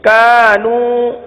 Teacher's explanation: جتنا کا کو کھینچا اتنا نو کو کھینچنا ہے